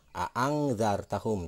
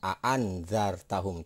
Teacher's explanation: Jadi nun mati ketemu dengan huruf zal di depannya, maka itu akan disebut ikhfa dan cara membacanya akan berubah dengan bunyi eng. Jadi a'angzartahum, tidak a'anzartahum, tidak seperti itu.